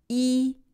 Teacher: E is a front and high sound meaning that the sound is produced in the front of the mouth with tongue raised high